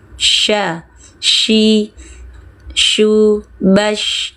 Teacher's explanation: Tengah lidah naik ke langit ya, menyebar udara dari dalam mulut.